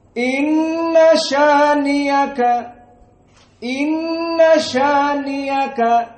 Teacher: qiraah Abu Jafar pada qiraah syaniaka maka hamzahnya diganti menjadi ya